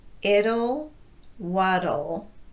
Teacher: they're pronounced the same way, with a tapped T and an inserted schwa vowel before the L.